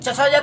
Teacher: च छ ज का उच्चारण स्थान तालु से